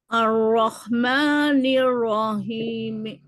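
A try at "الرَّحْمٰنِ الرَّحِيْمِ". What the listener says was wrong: Himi. Dikit lagi rendahin. Himi.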